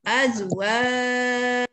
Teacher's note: Lembut je, jangan jim jadi ca, ya. Dia jim je bunyi dia. · Ma'rif disukun beserta dengan qalqalah. Jim tu huruf qalqalah. Jadi kena qalqalahkan. Kena ma'rif disukun dan qalqalah.